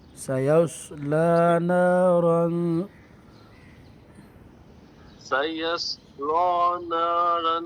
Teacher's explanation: صاد کو موٹا کرنا ہے، لام کو باریک پڑھنا ہے